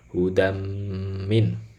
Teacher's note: Dia idgham, tanwinnya masuk kepada huruf mim sekaligus gunnah ya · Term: Idgham Bighunnah, idgham bi gunnah